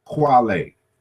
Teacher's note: And so we can see in these surviving languages, you know, how this played out. And so this K in the initial position becomes rounded